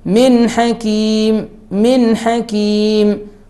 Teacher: it has نون ساكنة and it is followed by ح ح letter and it is from the six letters of إظهار so we must make إظهار here without غنة من حكيم من حكيم without stopping.